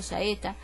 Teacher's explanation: una vocal abierta más otra vocal abierta también formaba el iato